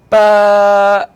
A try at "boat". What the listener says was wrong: All right, try to blend them together. Bow, like that.